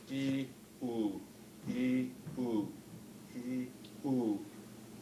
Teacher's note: So if you say E, oo, E, oo, E, oo, and look in the mirror or try to feel, you can see that the E is with the dorsum fronted, the oo has the dorsum backed